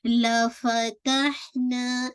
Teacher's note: वाज़े कीजिए, middle of हलक से अदा कीजिए, ठीक है, लफतहना, ना आपका अलिफ मदिया है, आपको पूरा टू काउंट पढ़ना है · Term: हम्स